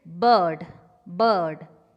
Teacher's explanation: as in bird, bird, unrounded, central, between half close and half open.